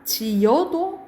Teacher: 지어라고 발음해야 되지만 지여도 가능. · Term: 반모음 첨가